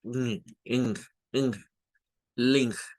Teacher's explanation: realmente en el inglés la N y la G es una misma consonante. Y ahí tiene un sonido ing, ing, link.